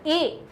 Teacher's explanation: कंठ से भी ध्वनि निकल रही है, साथ साथ में वो वायु हमारी तालु से भी टकराती है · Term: कंठ तालव्य